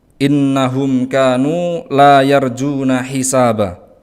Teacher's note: Innahum itu ada nun bertasydid, maka ini adalah gunnah musyaddadah, maka harus ditahan setidaknya 2 atau 3 harokat. Innahum kanu, ada mim sukun yang bertemu dengan kaf, maka ini termasuk idhar.